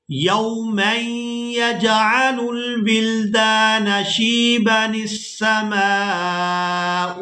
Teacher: یہاں با کو بغیر کھینچے ادا کریں گے جب ہم وصل کے ساتھ ادا کریں گے